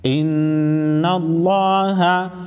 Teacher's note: لفظ اللہ سے پہلے والے حرف پر زبر ہے نون مشدد پر غنہ کریں گے اور لفظ اللہ کو موٹا پڑھیں گے